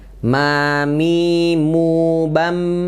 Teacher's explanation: menempelkan kedua bibir dengan lembut ya disertai gunah masuk rongga hidung ya mim hurufnya tipis dan mirip dalam m dalam bahasa Indonesia ya coba kita praktek